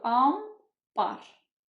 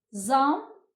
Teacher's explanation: n ilə b yan-yana gələrsə, bu zaman n hərfi m-ya keçir. Olur ambar.